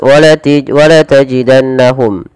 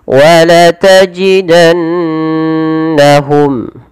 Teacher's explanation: Padahal di sini harus dibaca dengan bacaan yang kita namakan dengan gunnah, yaitu sembari menahan memasukkannya ke rongga hidung. · Pada lafal nun berharakat tasydid, ini perlu ditahan suara bunyi nunnya, jangan langsung dilepas.